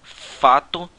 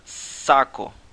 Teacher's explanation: O local da constrição determina qual som fricativo será produzido. Essas fricativas são conhecidas como não voseadas porque, no momento em que elas são produzidas, as cordas vocais devem ficar relaxadas. Dessa forma, nenhum som é produzido quando o fluxo de ar passa pelas cordas e, consequentemente, não haverá presença de voz no som produzido. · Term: fricativas não voseadas